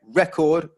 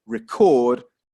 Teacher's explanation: record, first syllable, the noun, record, second syllable verb